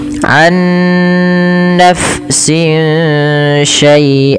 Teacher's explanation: suara nunnya disamarkan kepada huruf setelahnya sehingga ya dia membaca antara izhar dengan idgam yaitu tidak dimasukkan dan tidak diperjelas tapi di antara kedua-duanya. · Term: ikhfa hakiki